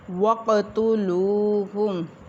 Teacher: قاف ساکن ہے، اس کے اوپر قلقلہ ہوگا۔ واو ساکن لام کے اوپر پیش ہے تو اس کے اوپر واو مدہ ایک الف کے برابر لمبا کریں گے۔